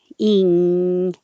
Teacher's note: the back of the tongue goes very high, ing, and blocks off all the airflow through the mouth